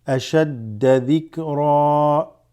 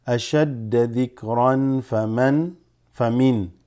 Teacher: You're going to basically say dhikra and read it as 2 count. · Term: mad iwad